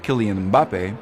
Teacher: in English starting a word with an m and a b next to each other is just not done